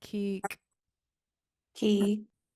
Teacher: shakan and let's start with the last word it's K uh High tone e e and then pinched K so repeat after me ke ke · It's K, high tone EE, and then pinched K.